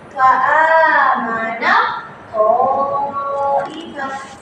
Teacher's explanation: Sebab dia ada mutajannisain dua huruf yang sejenis. Maka terus masuk idghamkan dia. Masukkan dia ke huruf yang kedu kedua.